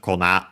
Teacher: Kona accented on its own on the last mora